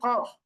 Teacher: কফের উচ্চারণটা জিহ্বার গোড়া তার বরাবর উপরের তালুর সঙ্গে লাগিয়ে কফ। তাহলে 3 নম্বর এবং 4 নম্বর মাখরাজ, এবং পরপর 4টা বর্ণ, পরপর 4টা বর্ণ কি স জ ত জ, তাহলে মোট 7টা।